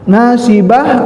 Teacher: Jadi pada dia diwaqaf, nasibah berubah menjadi ha. Pada saat dibaca wasolkan, dia kembali lagi ke ta ya, gitu.